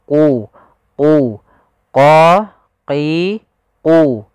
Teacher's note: Huruf qaf pangkal lidah kita harus kita angkat sehingga dia makhraj daripada huruf qaf itu pangkal lidah dengan langit-langit atas, maka dia menempel.